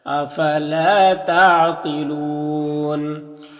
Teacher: افلا، لام الف مدہ ایک الف کے برابر کھینچیں گے۔ قاف حروف مستعلیہ میں سے پر پڑھیں گے اور یہاں پر وقف کریں گے تو مد عارض وقفی ہوگا